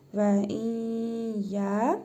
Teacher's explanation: Yə hərfini isə şəddəli tələffüz edirik.